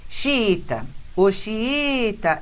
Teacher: esse I, veja aí, está sozinho na sílaba tônica.